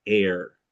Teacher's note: Air, A starts in gray day, but moves towards R. Air. So anytime there's an R, it's going to start in one vowel category and then move towards the R, move to purple.